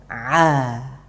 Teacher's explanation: Katub namanya kalau nggak salah di bahasa medis ini katub epiglotis ya. Jadi ain katubnya itu ditekan kemudian dilepaskan, dilepaskan.